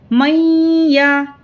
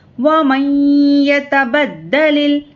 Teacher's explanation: میم کو یا سے ملا کر غنے کے ساتھ پڑھیں گے